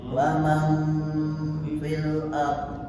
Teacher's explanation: jangan diikemkan, mulutnya jangan mikem. Man dicetakake terus didengungkan belakangnya, itu nak ikhfa